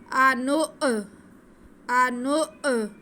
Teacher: हमज़ा साकिन है, इसको हम झटका लगा के पढ़ेंगे।